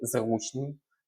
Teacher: Наголос падає на у, бо утворено від прислівника зручно.